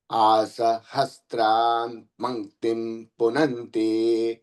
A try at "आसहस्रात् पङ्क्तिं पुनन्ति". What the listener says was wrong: సహస్రాం కాదండి. ఆసహస్రాత్ పంక్తిం పునంతి. ఆసహస్రాత్ పంక్తిం పునంతి.